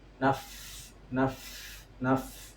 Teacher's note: fa yang bertasydid itu harus ada suara hembusan angin · gigit seri atas itu harus menempel ke ee bibir yang bawah